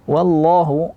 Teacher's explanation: di sini lafzul jalalah harus tebal, taghlidh tebal, wa tipis, dha tebal.